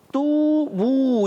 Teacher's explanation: ये दोनों वाव मद्दा है इनको खींचना है एक अलिफ